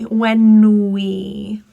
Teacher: The N links with we, it will sound like nui